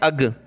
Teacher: کرنا ہے، ٹھیک ہے۔ فَأَنْجَيْنَاكُمْ فَأَنْجَيْنَاكُمْ وَأَغْرَقْنَا حمزہ غین زبر اغ، بہت سے اس کی جگہ کیا پڑھتے ہیں اگ، حمزہ غین زبر اگ، یعنی وہ گاف پڑھ لیتے